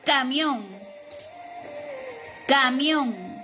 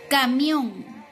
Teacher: ¿En dónde encontramos la intensidad o la fuerza de voz? En la última sílaba, que es on.